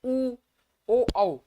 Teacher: कहेंगे उ पीछे से आ रही, उ ओ औ पीछे से आ रही है